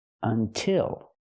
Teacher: until has two syllables but the stress is on the second syllable so we use the I sound like this is until but